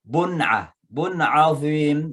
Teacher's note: Tanwin ketemu dengan ain, dibaca dengan izhar, jelas cara membacanya